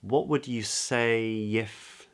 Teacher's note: So then we move on to the S, and then we get the spread vowel say, diphthong, say, a, say, not say with an a, but say, if. And then we get a little intrusive yod.